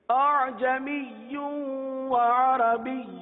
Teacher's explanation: دوسری ادائیگی جس میں اعجمی پڑھا، یعنی دوسرے حمزہ کو حذف ہی کر دیا، اتنا بھی نرم نہ ہو کہ حذف ہی ہو جائے.